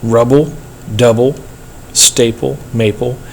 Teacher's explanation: That last syllable, it has no stress there, so it's feminine.